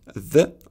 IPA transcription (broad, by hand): ð